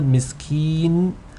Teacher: when you are elongating with the ya, ki, there should not be any nasal sound. There might be some nasal sound that comes naturally, but really the noon comes in only in the very end.